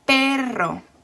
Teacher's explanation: to last syllable so for example you have the word perro so two syllables and the stress is on the first syllable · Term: word stress